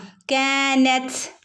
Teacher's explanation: കാനത് കാഫിന്റെ കൂടെ അലിഫ് മദ് വന്നിട്ടുണ്ട് കുറച്ച് നീട്ടി കൊടുക്കണം കേട്ടോ കാനത് തന്റെ മുകളിൽ സുക്കൂന് വന്നാൽ ത് ത് എന്നുള്ള ഒരു സൗണ്ട് വരണം ഒരു കാറ്റ് പോകുന്ന രൂപത്തിൽ വേണം പറയാനായിട്ട്